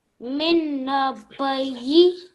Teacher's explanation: So this is Noon Mushaddad. We are joining Meme with Noon Shadda. So how we read it? 2 second nasal sound.